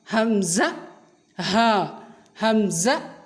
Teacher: اقصائے حلق یعنی سینے سے متصل، سینے کے ساتھ جڑا ہوا جو حصہ ہے حلق کا آخری حصہ، یہاں سے یہ 2 حروف ادا ہوتے ہیں جو کہ بھاری حروف ہیں، یعنی ان کی آواز بھاری ہوتی ہے۔ حمزہ کی آواز جھٹکے والی ہوتی ہے اور ہا کی آواز بھاری ہوتی ہے